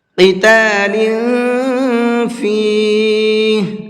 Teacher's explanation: قاف کو منہ بھر کے پڑھیں گے، اور لام کے نیچے تنوین ہے تو اس تنوین کے اندر اخفا کر کے پڑھیں گے، یعنی کہ ناک میں آواز کو چھپا کر کے پڑھیں گے، اس لیے کہ لام کے نیچے تنوین ہے اور تنوین کے بعد میں فا ہے۔